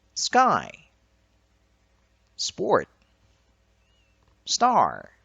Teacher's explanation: Voiceless stops are unaspirated when they occur after the S sound · The consonant clusters SK, SB, and ST occur in the following words. Although the vowels that follow them are stressed, they are not aspirated. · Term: unaspirated voiceless stops